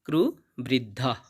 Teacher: এখানে শব্দের শেষে একটা বিসর্গ থাকার কারণে আমরা অর্ধেক হয়ের মতো সাউন্ড আনব